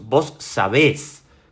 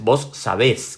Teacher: Con el tilde en la e, con el acento en la e, mejor dicho, porque importa la fonética acá.